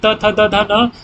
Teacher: त थ द ध न ये दंत्य है